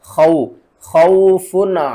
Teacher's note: واو ساکن سے پہلے زبر ہے، حروف لین ہے، جلدی کے ساتھ پڑھے